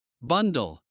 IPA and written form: ˈbʌndl (Bundle)